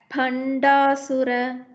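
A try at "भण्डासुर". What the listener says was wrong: Why you are saying bha? ப சொல்லுங்க. பக்தி. பக்தின்னு சொல்வீங்களா, பக்தின்னு சொல்வீங்களா? அந்த ப தான் எனக்கு வேணும். பண்டாசுர.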